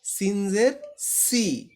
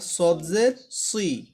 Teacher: সিন হলো পাতলা করে, শুরুতে হলো একটু বেশি করে বাতাস বের হয়। সদ হলো মোটা করে, বাতাস একটু কম বের হয়।